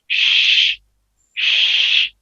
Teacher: अदायगी के वक्त आवाज मुंह में फैल जाए, सिर्फ शीन में पाई जाती है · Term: तफशी